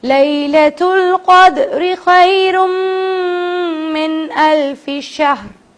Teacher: دال کیونکہ قطب جد میں سے ہے, ساکن کے ساتھ ہے, تو اس پہ قلقلہ کرنا ہے